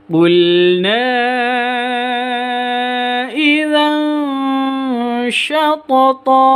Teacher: Idza tanwin bertemu dengan shin. Ini bacaan ikhfa hakiki. Bacanya samar disertai dengan dengung.